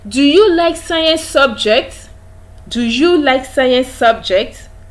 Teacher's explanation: Your voice rises. The pitch of your voice rises. That is why we said that polar questions are actually one of the statements you can make in the rising tone, with the pitch of your voice rising.